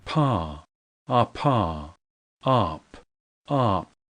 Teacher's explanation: 母音の前、母音の間、母音の後で破裂させるもの、母音の後で口を閉じたまま終わるもの、4種類発音してます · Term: 破裂音